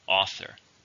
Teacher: How many syllables are an author? 2. Stress on the first.